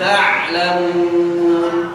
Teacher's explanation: Cirinya ain di mana ada aliran sedikit. Ketika sukun ada aliran sedikit. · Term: huruf ain